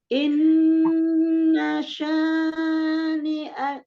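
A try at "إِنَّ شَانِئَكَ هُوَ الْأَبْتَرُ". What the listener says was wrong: Kepanjangan. Matobi itu 2 harokat itu cuma hitungan 1 kali ayunan, 1 alif ya. Sekali ngayun aja.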